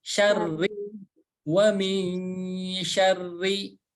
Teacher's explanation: Kemudian berikutnya ada huruf ro bertasydid dan berharokat kasroh. Huruf ro yang berharokat kasroh maka cara bacanya tipis.